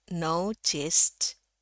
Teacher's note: Jadi bukan notice tapi no. Ada u-nya sedikit.